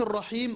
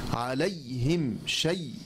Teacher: وأنت تشعر بهذا لما قلت الرحيم، لكن لما قلت عليهم شعرت بضيق المخرج، شعرت بأن منطقة وسط اللسان هي التي تتكلم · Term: ياء لينة